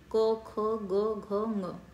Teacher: ये गटरल है, कंठ से प्रोनाउंस किया जा रहा है